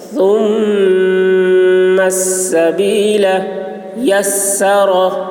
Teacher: ثا کی آواز باریک ہوگی، میم مشدد ہے، میم میں غنہ ہوگا